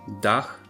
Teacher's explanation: in Polish it's always pronounced so DH is pronounced with a nice audible H at the end